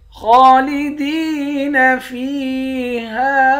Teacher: خا کو موٹا پڑھیں گے، ایک الف کی مقدار کھینچ کر بھی پڑھیں گے، خا پر کھڑا زبر ہے۔